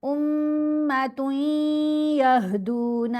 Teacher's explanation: تا کو یا سے ملاتے ہوئے یرملون کا ادغام، ساتھ غنہ